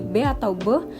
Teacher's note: Kemudian ada lagi bunyi B atau B, yang mana melibatkan bilabial dan letupan